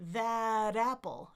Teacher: I can link it, and it becomes what we call a flap T. Some people say it sounds like a D, but if you have an R in your language that kind of taps the ridge there, it's going to sound more like an R to you.